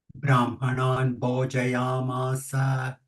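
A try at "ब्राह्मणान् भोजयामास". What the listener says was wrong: Bho, Mahaprana, not Bho.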